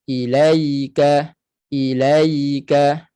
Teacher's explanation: jangan laju sangat dan satu lagi jangan putus suara ilaa ilaa jangan putus suara pada ya mati kerana ya bersifat dengan suaranya mengalir ataupun istilah tajwidnya rakhawah